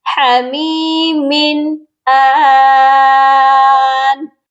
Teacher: تنوین کو ظاہر کریں گے کیونکہ آگے حمزہ ہے جو کہ حروف حلقی ہے۔ جب بھی تنوین کے بعد حروف حلقی آتا ہے تو صرف اظہار کیا جاتا ہے۔